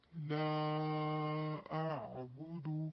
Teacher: کیونکہ یہاں پر الف مدہ ہے، الف مدہ کے بعد حمزہ متحرک ہے، اس لیے یہاں پر مد بنے گی مد منفصل جائز